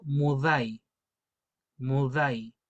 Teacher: lo vamos a pronunciar como una d, pero con la punta de la lengua en los dientes